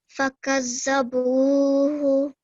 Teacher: But you have to stay for a bit long on boo, okay?